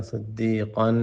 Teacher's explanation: صاد کو موٹا کریں، اور قاف پہ غنہ ہے، صدیقاً.